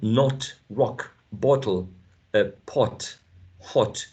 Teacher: We use this short and lax o sound